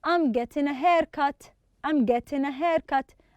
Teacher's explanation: we don't pronounce the g at the end